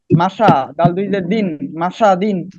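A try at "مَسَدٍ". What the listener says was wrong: হ্যাঁ, আপনার সিনটা একটু ছায়ের মতো হয়ে যায়, আর একটু আপনাকে খেয়াল রাখবেন। সিটি এরকম সিটি আওয়াজ হবে। মাসা দিন, মাসা দিন।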